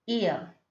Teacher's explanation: in ear it starts from e and glides to a